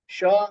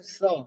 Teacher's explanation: ये स बोलते समय आपकी जीभ जो है दांत को लगेगी। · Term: दंत्य